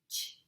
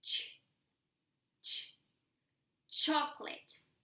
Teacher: it's pronounced as if it had a T sound before.